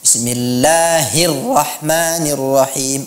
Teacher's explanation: pada saat melafazkan Allah, huruf H-nya dibaca dengan jelas, bukan dengan seperti tashil ya. Bismillahirrahmanirrahim, bukan Bismillahirrahmanirrahim.